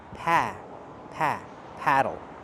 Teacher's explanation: Paddle use the a sound like black cat. It's more open.